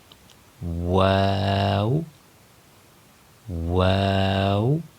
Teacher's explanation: واو کا مخرج ہے، دونوں ہونٹوں کی گولائی سے واو کو ادا کیا جائے گا، یعنی ہونٹوں کے گول کرنے سے واو ادا ہوگا.